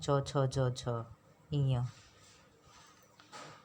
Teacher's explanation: चौ वर्ग स्पर्श संघर्षी होता है।